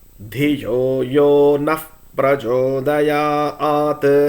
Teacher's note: The sound of the Visarga will change depending upon the immediately succeeding alphabet that is there in the succeeding word. The correct Visarga sound will be F if the following Akshara is Pra.